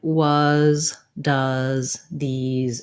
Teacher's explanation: frequently at the ends of words like was does these etc the letter s says the sound z